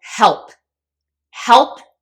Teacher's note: help ends in P which is voiceless